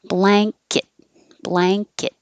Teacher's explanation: front it's the n-g-n like bang rang sang but kit and it can be kit or cut or cat it doesn't matter because the kit's going to be very short · this N before the K turns into an NG. So instead of an N in the front, it's the NG, ing, like bang, rang, sang, but BL, blanket.